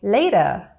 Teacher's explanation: the American T so it turns into a soft T